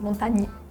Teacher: We just don't have the A at the end. We don't pronounce it.